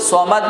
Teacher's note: صاد پڑھیں گے، سین کی آواز بالکل نہ آئے، اور آخر میں قلقلہ کریں گے